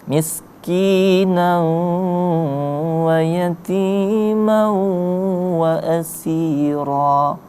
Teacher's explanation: Nah, kemudian ada huruf nan dibaca nau di situ karena tanwin atau fatahtain. Miskinan sesudahnya bertemu dengan huruf waw, maka berlakulah hukum bacanya itu idgham bi gunna, dibaca dengung.